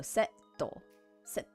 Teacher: there's going to be a slight pause when saying it because we're going to be saying that consonant a little harder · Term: double consonant